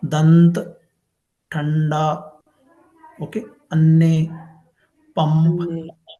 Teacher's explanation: When we pronounce these sounds, the sound comes only nasal sounds, not from mouth.